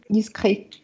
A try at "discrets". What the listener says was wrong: Discret, я не читаю на конце. Discret. Да, я как будто мне показалось, что я услышала.